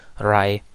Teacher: Then we have voiced alveolar approximant. So it is the sound usually come at the beginning of the word like rai, and it is an upside down version of r.